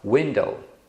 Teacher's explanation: esse U ele tem o som de u mas não é um o u tônico você não fala u ind tá então isso é uma semivogal